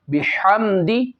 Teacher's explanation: یہاں پہ میم میں بعض لوگ غنہ کر دیتے ہیں، غلطی کرتے ہیں، اس میں غنہ نہیں ہے